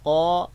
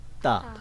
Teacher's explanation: حرف قا کو آپ پر پڑھیں گے اور حرف تا جو دو نقطوں والی ہے اس کو باریک پڑھیں گے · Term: پر اور باریک